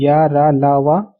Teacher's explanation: पहला है अल्प प्राण, अल्प प्राण व्यंजन। इनको बोलने से एयर कम निकलती है।